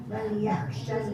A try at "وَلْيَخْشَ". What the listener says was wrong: Yang kali yah tu jangan macam ha. Wal yah.